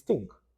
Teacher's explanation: we replace that th that voiceless th with a t